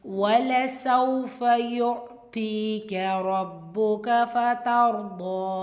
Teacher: பாஷத்தா இருக்கு அழுத்தம் கொடுத்து ஓதணும். ரப்புக்க ஃபத்தர் ரா சுக்கூன் வச்சு அதற்கு முந்தைய இடத்துல ஃபத்தா வந்திருக்கிறனால இந்த இடத்த வல்லினமாக ஓதணும்.